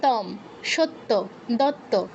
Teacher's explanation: তয়ের নিচে ও আছে, ওটাকে পাত্তা না দিয়ে ডাবল তো উচ্চারণ করছি